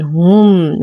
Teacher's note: نتم ضمة الهاء، نصبر على الميم بعدها حرف العين، فالحكم إظهار شفوي مع غنة ناقصة